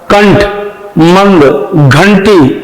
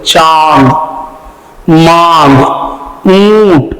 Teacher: अनुस्वार का उच्चारण सिर्फ नाक से होता है, जबकि अनुनासिक का उच्चारण नाक और मुंह दोनों से होता है।